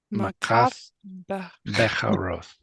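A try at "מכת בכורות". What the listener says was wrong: Got it. Beautiful.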